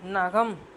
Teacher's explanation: நகம் நம்ம நாக்கு எங்க தொடுது பல்லுக்கு பக்கத்துல தொடுது இல்லையா நகம் அப்படின்னு சொல்றப்போ பல்லுக்கு பக்கத்துல நம்ம நாக்கு தொடும் பொழுது உருவாகக்கூடியது